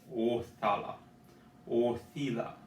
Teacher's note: The O is coming from like in the back of your throat. It's a deep O.